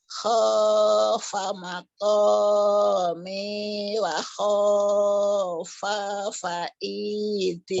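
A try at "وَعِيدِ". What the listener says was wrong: Wa'idi. Wa-nya jadi fa, fa-nya jadi wa. Wa'idi. Wa'idi. Khofa maqami wa khofa wa'idi gitu.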